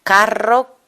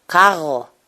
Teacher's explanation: esa pronunciación de la r como una G francesa